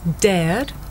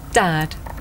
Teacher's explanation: tell the difference between this sound air and another sound the short vowel ah